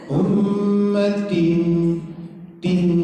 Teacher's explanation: Samar-samar atau disembunyikan. Bunyi bunyi tanwinnya atau bunyi n-nya. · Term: Ikhfa